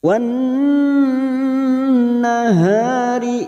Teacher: Ada alam ta'rif yang tidak bersukun namanya alif lam samsiyah atau idgham samsiyah. Fokus pada huruf nun yang bertasdid, ditahan selama 3 harokat, kita dengungkan. Wan nahari idza ha fathah diikuti alif mad tabi'i 2 harokat.